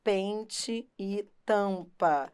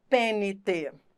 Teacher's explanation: em pente e em Tampa repare o m e o n não são pronunciados isso é dígrafo pente você não pronuncia o n você não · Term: vogais nasalizadas